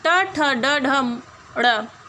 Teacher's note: मूर्धा से उच्चारण होने के कारण मूर्धन्य वर्ण है।